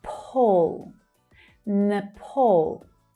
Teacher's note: So it's the second syllable that's stressed here and the vowel is the /ɔː/ as in 'door' vowel sound.